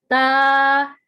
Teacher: زبان کی نوک جب اوپر والے دانتوں کے مسوڑوں سے ٹچ ہوتی ہے تو ورڈ تا ادا ہوتا ہے